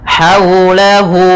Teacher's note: haula ha kecil bertemu dengan huruf waw sukun, maka di sini kita namakan dengan bacaan lin, bacaan yang lembut